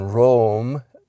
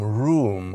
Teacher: But those during the course of the Great Vowel Shift, those double O words shifted from the O sound up into the oo sound